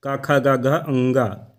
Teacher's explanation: जिनका उच्चारण कंठ से होता है, जैसे का वर्ग ध्वनियाँ